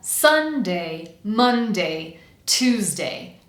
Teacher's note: the first syllable is going to be the strongest or the stressed syllable of the sentence.